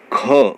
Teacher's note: ख में हमारे मुंह से ज़्यादा वायु निकलती है, तो ये महाप्राण हुआ